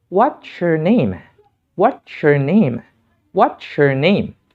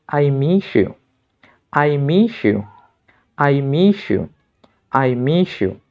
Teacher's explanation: Ketika bunyi se bertemu dengan bunyi ya, maka kita perlu mengucapkannya atau menggabungkannya menjadi bunyi sha. Sha. Atau dengan mudahnya kita katakan sha. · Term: peleburan bunyi konsonan